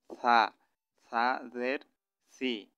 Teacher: সাটা একটু নরম হবে। জিভটা সামনের দাঁতের আগার সাথে লাগাইয়া